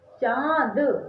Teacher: बोलते समय मुंह से तो आप बोल रहे हैं लेकिन आपके नाक में भी जोर लग रहा है